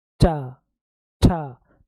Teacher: तो जीभ ऊपर तालु में लग रही। जब तक जीभ तालु में नहीं लगेगी आप चा नहीं बोल सकते हो।